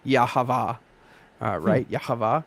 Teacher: every time there would be a vowel in the text, it was just an ah sound, the schwa, right? So if you were to use that to pronounce Yahweh, it would come out something like Yahavah, right?